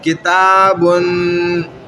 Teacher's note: تا خود باریک ہے, الف بھی کیا ہو گیا اس کے ساتھ باریک بن گیا